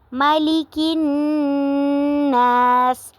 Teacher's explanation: مالک الناس پہ بھی نون پہ غنہ بھی ہو رہا ہے اور الف مدہ بھی ہو رہا ہے۔